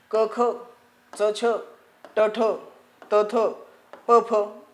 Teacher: नाद किंवा ध्वनी निर्माण करत नाही म्हणून अघोष व्यंजने आहेत